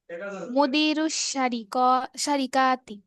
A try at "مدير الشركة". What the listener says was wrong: টান নাই, সারিকা টান নাই, সারিকা কি?